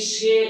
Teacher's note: এক অক্ষর বিশিষ্ট সর্বনাম পদে যদি এ ধনি থাকে তাহলে ওই এ ধনির উচ্চারণটা সংবৃত মানে ঠিক থাকবে